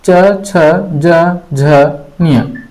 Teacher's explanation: तालव्य, तालु से उच्चारित च, छ, ज, झ, ञ। य, स, तालु मुंह का ऊपरी भाग से उच्चारण होता है।